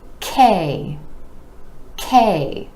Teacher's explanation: the K consonant is an air puff sound, meaning it's made with a tiny puff of air, and you want to make sure that K gets the puff of air, or else it may sound more like gay.